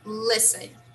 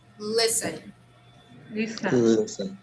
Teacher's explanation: in this word, we do not pronounce the letter T. It's silent.